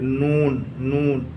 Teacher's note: और इसी तरीके से नून का मखरज है ज़बान की नोक और ऊपर के मसूड़े